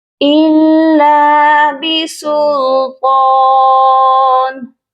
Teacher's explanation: طا کو ہم ایک الف کے برابر لمبا کریں گے، اس کے اوپر بھی کھڑی حرکت ہے اور طا کو موٹا بھی پڑھا جائے گا